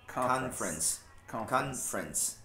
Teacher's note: Do F parece que vai pro R direto, né?